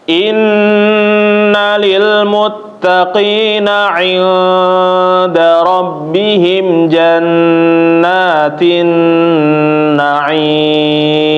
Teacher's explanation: Inna, jannah sama naim. Panjangnya disamain ya, Bapak-bapak, ditahan 2 atau 3. Jangan langsung pindah ataupun berbeda panjangnya. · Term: nunnya yang bertasydid